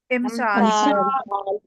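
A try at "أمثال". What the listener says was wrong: इमसाल तो नहीं था। ये आप दूसरी दफा गलती कर रही हैं, वही जेर वाली। हमने तो बड़ा कड़ाकेदार आपको बताया था, जबर वाला हमजा और अलिफ, जबर वाला और हमजा अलिफ, कम से कम 3 टेबल 8 या 24 लफ्ज दोहराए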